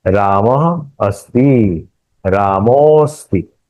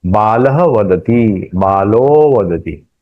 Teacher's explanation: विसर्ग के पूर्व अ, विसर्ग के पश्चात अ, ये स्वर या मृदु व्यंजन हो तो इस विसर्ग का उ होता है। यह उ और अ, यह दोनों मिलकर ओ होता है, और इस समय ओ के बाद अ के स्थान पर अवग्रह लिखा जाता है।